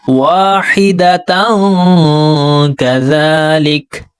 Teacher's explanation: تا کے اوپر 2 زبر ہے یعنی تنوین کے بعد 15 حروف اخفا میں سے یہاں پر کاف ہے تو یہاں پر اخفا کریں گے یعنی سافٹ غنہ کیا جائے گا